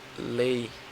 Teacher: Você fala bem mais alto o E do que o I. Porque o E tem a função de vogal e o I de semivogal. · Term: ditongo decrescente